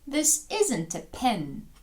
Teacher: інтонація в нас падає на isn't ми його ставимо під наголос